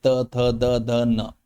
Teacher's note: जब हम त वर्ग बोलते हैं तो हमारी जीभ जो है वो दंत में लगती है जाके